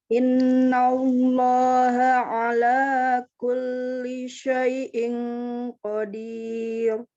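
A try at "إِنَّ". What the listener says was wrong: Oke, yang kedua, nun tasydid itu lebih panjang dengungnya.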